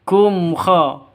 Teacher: Kaf mim matinya jelas, kha-nya juga jelas karena izhar safawi.